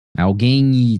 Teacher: guem não Tá vendo você não pronuncia o u né Uhum você só pronuncia o e nasal e o m no final com som de i